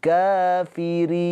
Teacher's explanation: Ri-nya ini dibaca dengan tarkik tipis. Karena huruf ro-nya ini berharokat kasroh.